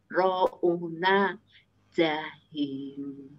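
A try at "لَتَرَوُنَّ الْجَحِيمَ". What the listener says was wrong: Wunna nun bertasdid ditahan agak lama. Latarouunal wunnal.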